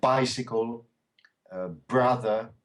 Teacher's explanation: And the B is short. It's like a P almost. P, B. So bicycle, brother.